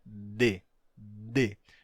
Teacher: No D, temos vibração das cordas vocais. D, D. Já no T, não, é T, T.